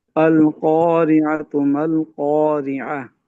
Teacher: काफ को ना फुल मोटा पढ़ेंगे